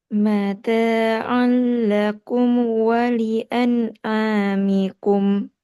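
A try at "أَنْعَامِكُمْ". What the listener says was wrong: Tekan sedikit ain coba. An'amikum.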